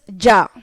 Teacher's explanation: Ja is a D and a Z like this.